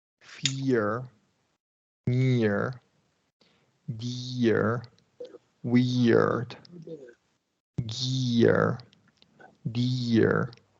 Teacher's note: we're emphasizing that Y sound before the r